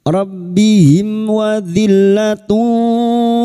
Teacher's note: [Musik] Sekarang di sini kita wasal atau terus mim sukun bertemu wau idhar syafawi. Mim sukun dibaca jelas tanpa mendengung.